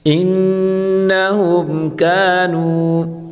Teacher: نون مشدد ہے، ہمیشہ غنہ کے ساتھ پڑھیں گے۔